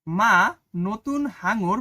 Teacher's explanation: ফুসফুস থেকে আসা বাতাস মুখের মধ্যে প্রথমে বাধা পায় এবং নাক ও মুখ দিয়ে বেরিয়ে যায় সেসব ধ্বনিকে নাসিক্য ব্যঞ্জন বলে।